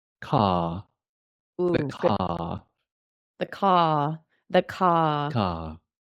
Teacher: in a British accent the a is very open open your mouth and keep it there